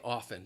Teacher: you're not going to hear that t it is a silent letter a silent t